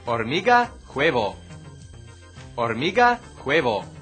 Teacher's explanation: In Spanish, the H is always silent, as in the English word honesty.